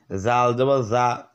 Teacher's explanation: জাল জিব্বার আগা ওপর দুইটা আগার সঙ্গে লেগে নরম করে